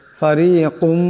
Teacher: ফারিকুম এখানে কাপের উপর 2 পেশের তুনবিন, এরপর মিম আসছে, ঈদগাম হয়ে যাবে, ঈদগামের একালে পরিমাণ গুণা হবে।